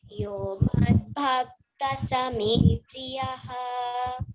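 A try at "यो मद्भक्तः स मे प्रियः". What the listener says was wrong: Bhaktassa, like santushta. You know, after visarga, you are seeing sakara. So you should say santushtas satatam. Like that, madbhaktas same priyaha.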